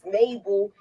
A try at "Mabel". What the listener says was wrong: Moochie, I don't like the way you say her name. I don't like the way you say her name. You say her name like you saying naval. Like she's a naval ship.